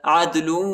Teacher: دال کو جھٹکے کے ساتھ پڑھیں گے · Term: قلقلہ